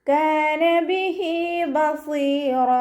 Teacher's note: സ്വാദ് ഇസ്തിഅലാൻ്റെ ലെറ്ററാണ്, തഫ്ഹീം ചെയ്തിട്ട് ഉച്ചരിക്കുക. ഇത്ബാഖിൻ്റെ ലെറ്ററും കൂടി ആയതുകൊണ്ട് കെസ്റ ആയാലും നമ്മൾ നല്ലോണം തഫ്ഹീം ചെയ്തിട്ട് ഉച്ചരിക്കുക കേട്ടോ.